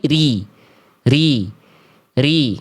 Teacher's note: Salah satu kesalahan yang seringkiali terjadi ketika ro berharakat kasrah adalah dibaca dengan getaran yang berlebihan atau juga sebaliknya getarannya justru jadi samar ya. Nah, jadi huruf ro itu ketika dia berharakat kasrah itu dibaca karakternya tipis